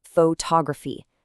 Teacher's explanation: We start with photography, heavily stressing that first part, but add a suffix and the stress has to move to balance the word out.